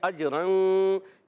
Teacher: یہاں تنوین کے بعد فا آ گیا، اخفا کا قاعدہ ہوگا، غنہ کریں گے، ایک الف کا غنہ کرنا ہے۔ · اجرن میں حمزہ کو جیم سے جب ملائیں گے، جیم میں قلقلہ ہوگا، جیم ساکن ہے، آواز لوٹتی آئے گی، جنبش یا حرکت ہونا یہ قلقلہ کہلاتا ہے، آواز لوٹتی ہے۔